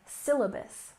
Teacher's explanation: syllabus, with emphasis on the first syllable. Syllabus, syllabus.